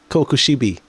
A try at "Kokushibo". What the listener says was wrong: Isn't it Kokushibo? Because it's an O at the end. not an I? Kokushibo.